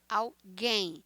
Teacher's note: alguém em português, a sílaba tônica é a última sílaba